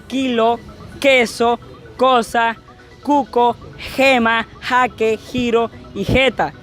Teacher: la lengua pega con la parte trasera del paladar haciendo así que el sonido suene como lage o la j